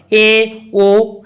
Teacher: होगा ए ओ है ना तो इसमें क्या होता है कि इसको उच्चारण में संवत से थोड़ा अधिक मुख खुलता है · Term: अर्ध संवृत